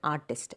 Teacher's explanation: So, the root word or the original word art is stressed in that word artist. Artist is a 2-syllable word, but the first syllable is stressed.